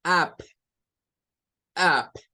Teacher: es una vocal posterior y está en el rango de semiabierta